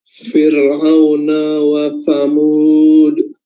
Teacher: Huruf sa itu ujung lidah diapit, kedua gigi atas dan bawah.